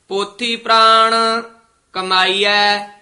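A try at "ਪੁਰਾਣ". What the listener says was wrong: प्राण नहीं कहना। पोथी पुराण कमाई है।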